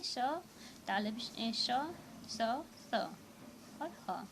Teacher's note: हमारे मुंह में घर्षण के द्वारा एक उत्पन्न वायु, यानी उत्पन्न गर्म वायु के द्वारा इन चारों वर्ण का उच्चारण होता है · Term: उष्ण व्यंजन